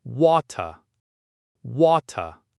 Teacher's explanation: In a standard British accent, you might hear something like water, water. The T is sharp and the R at the end is silent.